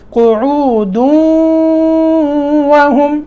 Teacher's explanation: हाँ, मिलाकर पढ़ा ना तो क़ुऊदू, यहाँ इदगाम किया तो यहाँ गुन्ना आएगा, ठीक है। गुन्ने की आवाज़ पैदा होगी, गुन्ना इदगाम गुन्ने के साथ होगा